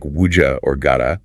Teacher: Look for a palatalized assimilation like wuja or gada.